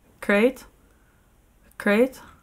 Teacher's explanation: das nennt man linguistisch einen retroflexen Flap, während das Englische ein Approximant ist